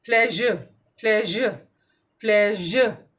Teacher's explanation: Then you have श एंड ज, श, ज, pleasure, pleasure, pleasure. You will feel the vibration, whereas in pronouncing sh, there is no vibration.